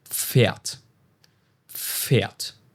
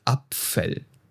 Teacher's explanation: And the trick is that you pronounce both letters, and you start with a quick P burst and then instantly follow it with an F sound. You know, almost as if you're saying the two letters at the same time. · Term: PF sound